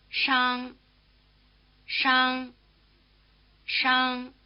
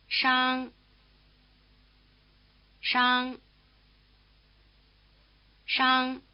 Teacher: The first of these fricative sounds, the one spelled SH, is rather like our SH sound, except that the tongue is curled back in the R position.